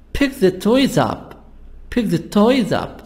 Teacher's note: we have the stress on the verb preposition and the noun the object